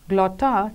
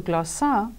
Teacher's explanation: the Attic consonant cluster, the geminated T, changed to a geminated S of the majority of dialects, as in glotta changing to glossa, which means tongue or language in Greek.